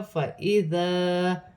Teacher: یہاں الف مدہ بھی بن رہی ہے اور بڑی مد بھی ہے، مد متصل، 5 الف کی مقدار کھینچ کر پڑھا جائے گا. الف مدہ کو ملا کے 6 الف کی مقدار تک کھینچ کر پڑھا جائے گا.